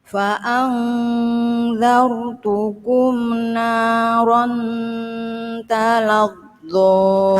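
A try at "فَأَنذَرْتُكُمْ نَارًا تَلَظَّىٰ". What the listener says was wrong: Cuman talazzonya kurang tebal. Talazzo. Itu huruf tebal, apalagi dikasih tasdid double. Hurufnya ada double tebal, ya. Jadi harus benar-benar tebal.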